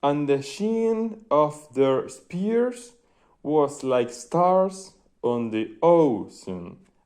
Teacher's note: los ternarios, 3 feet, anapest, que es unstressed, unstressed, stressed